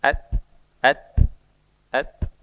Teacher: sifat huruf ta itu ada alhamsu ya alhams keluar nafas maka ketika sukun itu ada sedikit seperti berdesis